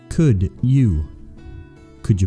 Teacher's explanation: a D sound followed by a Y makes a J sound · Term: sound blending